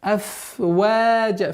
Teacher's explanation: Аф, обратите внимание, аф-ваджа. Фрикативность звука фа не надо уменьшать. После у нас появляется долгота в размере двух огласовок вау, фатха.